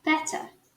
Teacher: Já o sotaque britânico, com essa mesma palavra, a gente vai falar os dois T's.